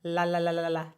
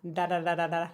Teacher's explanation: The only difference here between an L and a D really is going to be the speed of what it's done. If you linger in that spot and send a little more pitch through it before releasing the connection, then that'll be an L.